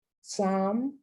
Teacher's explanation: not only is the L silent, but so is the P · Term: silent L